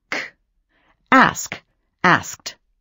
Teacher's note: You do that after sounds like k, p, sh. Those are voiceless sounds. Sounds you make just by blowing air through your mouth.